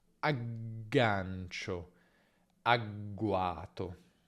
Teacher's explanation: Per la G lunga, come sempre, la vibrazione continua durante la fase di chiusura.